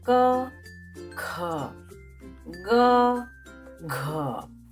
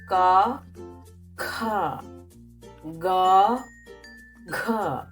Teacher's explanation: All these four consonants or Vyanjan belong to the first group, pronounced from soft palate. The first one unaspirated, the second one aspirated.